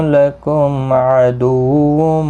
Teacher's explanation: لکم میم ساکن کے بعد عین ہے، اظہار شفوی ہوگا